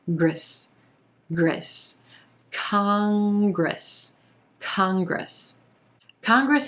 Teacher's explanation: we go into a g r consonant cluster at the beginning of the second syllable